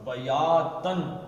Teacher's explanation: اس کو بیاتن نہیں پڑھیں گے بلکہ اظہار کریں گے اس تنوین کے نون کا، بیاتن، او یا اب نہارن کے آگے کیا ہے جی؟